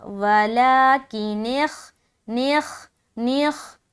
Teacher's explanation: خا کو موٹا ادا کریں گے کیونکہ خا حروف مستعلیہ میں سے ایک ہے